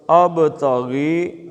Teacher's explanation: با ساکن ہے اور کلکلے کا ہے